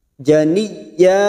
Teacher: Janiyya masuk ke huruf ya yang bertasdid tanpa ditekan lama-lama, hanya masuk janiyya.